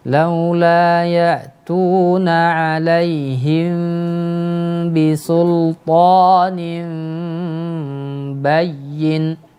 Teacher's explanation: Ada iklab, ada ikhfa syafawi di situ Pak, didengungkan 2 harokat.